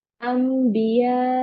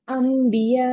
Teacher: नून साकिन तनवीन की जगह इस मीम को पढ़ेंगे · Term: इकलाब